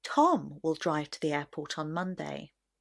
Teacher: the stress will naturally be on the word Tom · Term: sentence stress